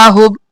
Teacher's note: کو نہیں ہلانا، ساکن رکھنا ہے، نفسہ، ہوب، ہا پیش با، ہوب با ساکن ہے تو قلقلہ کریں گے